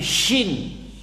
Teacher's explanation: Shinnya ada tasydid, maka suara keluarlah suara tafashi. Tafashi itu artinya angin menyebar, angin berserakan. Ya, di mulut.